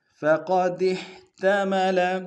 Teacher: ہا کو گہرائی سے ادا کریں گے